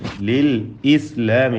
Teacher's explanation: ലിൽ ഇസ്ലാമി എന്ന് പറയും ചിലർ, ലിൽ ഇസ്ലാമി, അത് തെറ്റ, അങ്ങനെ പറയുന്നു. ലിൽ ഇസ്ലാമി ഹംസ വ്യക്തമാക്കണം.